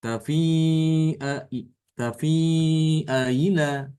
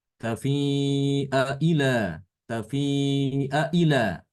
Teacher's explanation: Jadi ketika kita mengucapkan harokat hamzah yang kedua, ya, yaitu yang berbunyi ila, ya, ila. Itu hamzahnya tidak dibaca dengan hamzah sebagaimana mestinya, ya. Tapi dia dibaca antara hamzah dengan huruf mat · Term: tasil